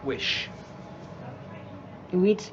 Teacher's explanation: e so a short I to a long e and then she's changing the sh the sh on the end to a t so instead of wish she's doing wheat